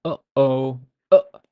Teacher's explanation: produced by blocking off the Airstream at the top of the voice box and then releasing it a common description is a catch in the throat uh okay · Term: Hamza